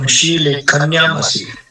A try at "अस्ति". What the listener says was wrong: अस्ति। असि नहीं, अस्ति।